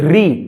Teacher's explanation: री तो जीभ घूमेगी, जीभ क्या होगी, घूमेगी री बोलने में, तो ये है मूर्धन्य